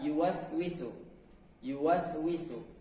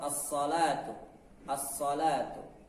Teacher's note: ujung lidah bertemu dengan gigi seri bawah